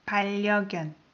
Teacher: when I pronounced N of the first syllable, I pronounce it as R because the following syllable starts with R